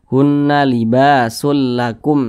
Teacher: tapi sulakum langsung masuk ke huruf lam hunna libakum seperti itu jangan didengungkan dibaca pendek saja karena ini dia tidak berdengung hunna libasulakum nah pendek saja jangan ditahan suaranya kemudian di sini